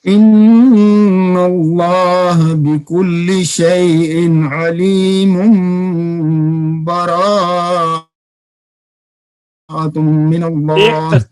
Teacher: अच्छा, अलीमुम मीम दो के ऊपर जो दो पेशे हैं ना, उसके बाद बा आ रही है, तो यहाँ पर नून तनवीन में इकलाब होगा, मीम गुन्ने के साथ आपने पढ़ना है।